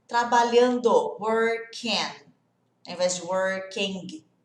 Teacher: Não tem esse G do G, working, ele desaparece.